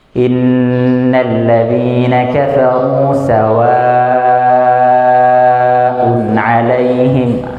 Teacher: pas panjang mad, itu dia mengalirnya di tengah mulut, jadi nggak ada lidahnya, itu nggak main kemana-mana, nggak main ke langit-langit, nggak main ke geraham, nggak main ke gigi seri dan seterusnya. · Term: huruf mad